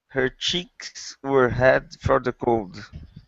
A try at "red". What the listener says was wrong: Okay, now give me an English R and not a Portuguese R. Instead of saying head, it's red. Her cheeks were red from the cold.